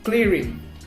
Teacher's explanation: So in the clearing word, we put the heaviest emphasis in the first syllable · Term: primary stress